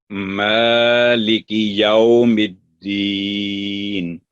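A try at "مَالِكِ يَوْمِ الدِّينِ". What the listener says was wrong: ठीक है, माँ की आवाज मोटी ना हो, ठीक है? क्योंकि ये हरूफे वो मोटे वाले हरफ नहीं है।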